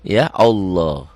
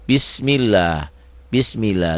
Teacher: lafaz Allahnya dibaca tipis Kenapa dibaca tipis karena sebelum lafad Allah baris di bawah